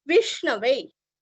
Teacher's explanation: षटकार की जो श है वो हमारे तालु को स्पर्श करती है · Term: श षटकार का